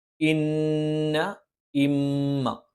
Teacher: ഇന്ന, നൂന്, മീമ് ഈ രണ്ട് അക്ഷരങ്ങൾക്ക് ശബ്ദ് വന്നാൽ മണിച്ചുച്ചരിക്കണം.